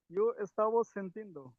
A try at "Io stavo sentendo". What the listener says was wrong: সেন্টিন্দো না, সেন্টেন্দো, এন্ডো হবে।